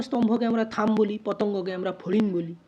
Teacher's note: পটা ফতে পরিণত হয়ে গেছে, অর্থাৎ অল্প প্রাণধ্বনি মহাপ্রাণধ্বনিতে পরিণত হয় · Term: মহাপ্রাণী ভবন